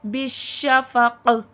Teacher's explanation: بش میں شین میں تفشی پھیلاؤ ہوتا ہے. بالشفق، اور قاف میں وقف میں خلخلہ واضح ہوگا.